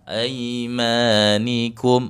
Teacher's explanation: arahnya ke i. Ai bukan ae ya.